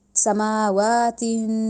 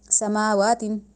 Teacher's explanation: سماواتن اس طرح رکے اور نون کی ساؤنڈ ہم ناک میں لے کے گئے